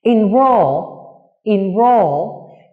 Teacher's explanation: Enroll, enroll, như các em có thể thấy âm tiết roll được phát âm to hơn, dài hơn và cao hơn so với âm tiết in. Vì thế nên roll nhận trọng âm trong từ enroll.